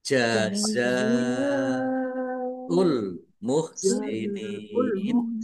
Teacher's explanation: Jazzaul muhsinin jaza za jelas jazaul [Musik] muhsinin za fatha alif mad thobi'i. Tetapi karena bertemu dengan huruf hamzah dalam satu kata maka menjadi mad wajib muttasil. Harus dibaca panjang lima harakat.